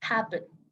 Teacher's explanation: cuando tú pronuncias este verbo, el estrés viene en hap